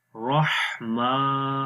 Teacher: اب را کو موٹا پڑھیں گے اور ہا کی آواز گلے کے درمیان والے حصے سے آئے گی. رحما، میم کے اوپر کھڑی زبر ہے، اس کو بھی لمبا کریں گے.